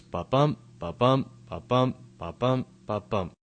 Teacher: a popular type of meter with ten syllables per line and with every unstressed syllable followed by a stressed syllable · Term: iambic pentameter